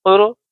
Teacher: پیش ہے تو را کو ہم پر پڑھیں گے، موٹا پڑھیں گے